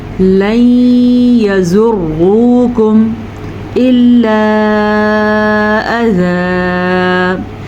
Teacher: रॉ को भी यहाँ पे हम पुर पढ़ेंगे, रॉ के ऊपर पेश की वजह से · मद को खींच के पढ़ना है, तकरीबन 2.5 सेकंड तक, 2.5 सेकंड तक इस मद को हम खींच के पढ़ेंगे।